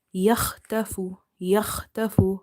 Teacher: Kha is heavy, ta is heavy.